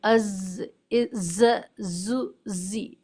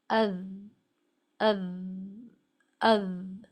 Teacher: اس کا ایک طریقہ یہ بھی ہے کہ آپ اپنے بائیں ہاتھ کو لیفٹ ہینڈ کے انر یا آؤٹر پورشن کو، جو انگلیوں کا اوپری حصہ ہے، وہاں وہ انگلیوں کا بیک پورشن اگر آپ اپنے گلے پر رکھیں اور پھر اس کو پڑھیں از، ز، زو، زی، تو آپ کائنڈ آف وائبریشن فیل کریں گے اپنے نیک پر. تو ساؤنڈ آف ز جو ہے وہ ٹھیک ادا ہو رہی ہوگی.